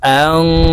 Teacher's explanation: নুন সাকিনের পরে ফা ইকফার হরফ আসছে, তাই এই নুনকে গুন্নার সহিত নাকের ভিতরে লুকাইয়া পড়বো